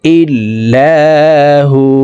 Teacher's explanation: ওয়াকফের ক্ষেত্রে এই হা ওয়ার সাথে 1 আলিফ টেনে পড়ব